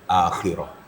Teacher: ada bergetar di dalamnya, ada suara derak-derik dalam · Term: huruf kha